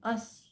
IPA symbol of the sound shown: ʌ